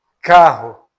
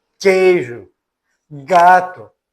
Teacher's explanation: quando a parte posterior da língua encontra-se com o véu palatino, criando ali obstáculo à corrente de ar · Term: velares